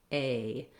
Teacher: I'm moving from a more tense into a more relaxed position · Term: diphthong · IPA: /eɪ/